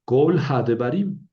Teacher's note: Aquí no dice cal, dice col, porque es una sílaba cerrada, no acentuada. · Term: kametz hatuf